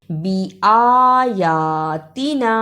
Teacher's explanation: نون زبر نا، لیکن چھوٹی مد ہے، اس کو تھوڑا سا لمبا کرنا ہے